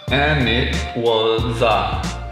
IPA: æ nɪt wə zə